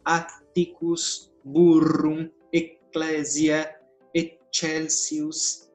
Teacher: as consoantes duplas vão ser pronunciadas com 2 tempos, como em italiano